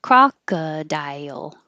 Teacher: Almost dial, almost two parts, because when you say die, your tongue goes very high and then it needs to slide down for the L.